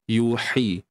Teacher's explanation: kita kena sempitkan tengah kerongkong untuk dapatkan unsur yang kita selalu sebut pedas. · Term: ha tengah kerongkong